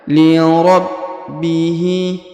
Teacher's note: Huruf ba berharokat tasdid maka kita tahan dan ditekan.